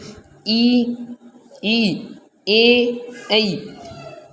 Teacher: जीभ का अगला भाग काम में आता है। इसमें देखो कौन कौन से हैं, ई, ऐ। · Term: अग्र स्वर